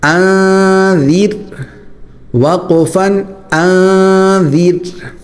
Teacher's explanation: ٹھیک ہے، حمزہ نون زبر ذال را زیر زیر. اب یہاں پر را باریک ہوگا کیونکہ اس سے پہلے زیر ہے · اب یہاں پر ذال جو ہے وہ نکالنے کا طریقہ یہ ہے کہ ذال میں زبان کی نوک جو ہے وہ دانتوں کے درمیان بلکہ اوپر والے اگلے دانتوں کو ہلکا سا لگا کر نرمی سے نکالنی ہے